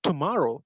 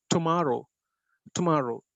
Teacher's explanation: the middle syllable takes the stress